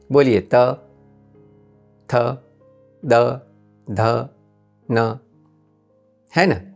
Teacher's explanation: इस वर्ग के पांचो व्यंजनों का उच्चारण करते समय आपकी जीव आपके दांतों को स्पर्श करते हैं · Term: दंत्य